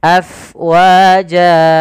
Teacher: alirkan nafasnya, karena fa itu harus ada angin yang kita keluarkan karena dia sifatnya hams, mengalirnya nafas